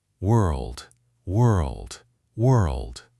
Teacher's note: The tongue starts shaping for the R and rolls straight into the L position without a full stop or pause between them.